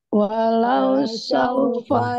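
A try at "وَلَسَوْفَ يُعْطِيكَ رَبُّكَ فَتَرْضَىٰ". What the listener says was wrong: walau sa. Bukan walau sa ya, tapi wala sau. Wala saufa yu'tika rabbuka fatarda. Yang pertama, wala saufa yu'ti dibaca panjang.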